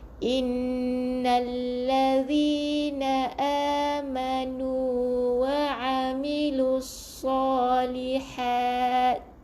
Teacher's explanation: Ha yang pedas, ingat ha yang ada angin.